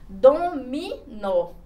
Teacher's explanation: a sílaba forte está aqui na minha última sílaba. Então, ela é chamada de oxítona.